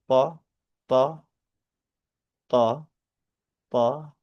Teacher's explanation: itu pengucapannya seperti huruf ta, tetapi lebih ke versi tebal dari huruf ta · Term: huruf to